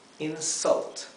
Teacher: otra vez la u se pronuncia entre una a y una e